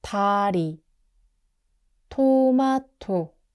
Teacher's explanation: 디귿 is soft, like D at the start. 티읕 is like an aspirated T, so more air comes out